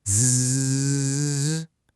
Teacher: the vocal cords are brought together and the air makes them vibrate, which creates this distinct buzzing sensation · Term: voiced sounds